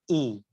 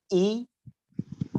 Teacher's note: হামজার উচ্চারণ হলকের একদম শুরু থেকে হচ্ছে সেটা হবে ই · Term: হামজা জের